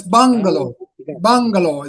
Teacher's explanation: The stress lies on the first syllable. So it's bangalow and not bangalo and not bangal.